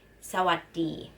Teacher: why when we say Sawadee so what we have three syllable the first two syllable is short the last one is long